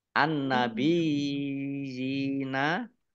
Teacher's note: alif lam samsiyah karena tidak dibaca. Langsung masuk ke huruf berikutnya yaitu nun. Ditandai nunnya ada tasdidnya.